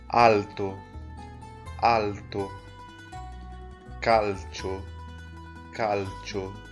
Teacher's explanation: mintu letra L vai ter o mesmo som que em espanhol a gente vai usar a ponta da língua no céu da boca e nunca vai ter um som de u